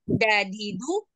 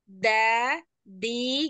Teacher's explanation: da di du ade Nah, huruf ade dalnya masih terlalu ke belakang, ujung lidahnya masih yang da, di, memang dalnya orang Indonesia asli itu. Jadi kita mau pakai lehja Arab ya, yang ujung lidahnya itu ke pangkal gigi, pangkal gigi seri ya. yang atas. Coba.